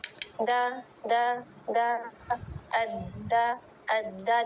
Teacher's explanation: द अ द देखिए pointed जबान है और यहां आके लग रही है। ऊपर के जो इंसिसर्स है उसके ऊपर जो मसूड़े की नोक है वहां लग रही है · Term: दाल